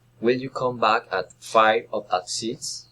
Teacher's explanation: Alternative questions, rising and falling intonation.